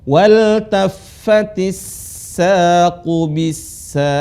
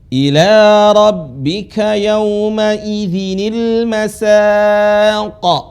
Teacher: Kalau hurufnya sukun, dia mantul suaranya. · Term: huruf qalqalah